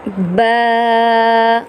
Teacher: با کو ہم نے ایک الف کے برابر کھینچنا ہے